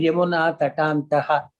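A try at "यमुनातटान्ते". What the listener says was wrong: No, Tatante only you have to pass. Even if you pass, you have to pass at Tatante. No, it will not become Tatante. There is no Visarga there. It's only Tatante.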